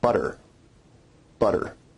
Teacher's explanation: notice where we write it with two T's in English that your tongue is producing a tap sound there rather than a full stop